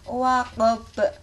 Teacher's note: Ini qalqalah. Di sini akhir ini ada huruf ba, maka harus dipantulkan.